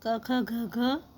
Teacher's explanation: क ख घ घ इसको हम कंठ से बोलते हैं, यानी कंठ कहा जाता है उसको। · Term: कंठ्य